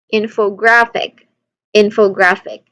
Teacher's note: Infographic, you give the strongest emphasis to in and a noticeable but lesser emphasis to graph. So the middle syllable fa and the final syllable k, ik should be quick and unstressed. So we get to say infographic, infographic.